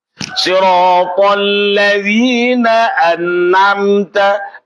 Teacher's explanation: ketika baca nun, ketika baca ain, nunnya masih gandeng, bunyian nun dan ain itu bergandeng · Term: tawallud